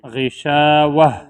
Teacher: اگر وقف کریں گے تو ایسی صورت میں تا ہا بن جائے گا